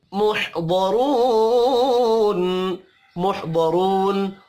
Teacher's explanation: वाव मद्दा को एक अलिफ के बराबर खींच कर पढ़ेंगे।